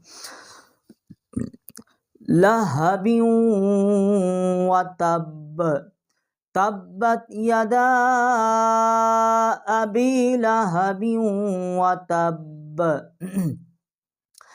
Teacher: یہ ہا جو ہے یہ حروف حلقی میں ہے، اور یہ حلق کا جو آخری حصہ ہے وہاں سے ہم اس کو نکالیں گے